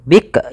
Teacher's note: Ya, hati-hati dalam melafalkan huruf kaf, tidak langsung bikrun. Bik, jangan sampai memantulkan huruf kaf karena kaf tidak punya sifat qalqalah